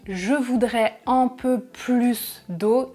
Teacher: C'est une quantité positive, phrase affirmative, donc je prononce le S à la fin du mot plus. Donc attention avec ces expressions et parfois le S est un peu fluctuant, on peut entendre, c'est assez rare mais c'est possible, de plus au lieu de plus.